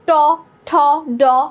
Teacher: জিভের ডগাটা কিন্তু ঠিক মূর্ধাতে যে টাচ করছে, মূর্ধাতে যে স্পর্শ পাচ্ছে